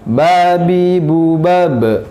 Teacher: Ba ada qalqalah, ya, memantul.